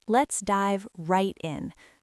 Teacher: The biggest stress is on the word right.